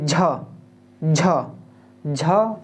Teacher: मुंह से थोड़ा ज़्यादा हवा निकल रहा है, झ एकदम स्पीड से और एक रगड़ के साथ थोड़ा सा निकल रहा है, तो महाप्राण, ठीक है।